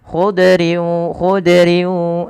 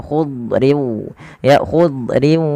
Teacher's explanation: yaitu pangkal lidah terangkat dan dia menebal Kemudian yang kedua idbaq idbaq itu lidah kita lebih melekat-lekat ke atas langit sehingga dia menebal suara huruf dadnya